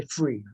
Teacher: and there are certain features such as the th fronting so instead of saying three people will say free right so uh substituting it with a with the F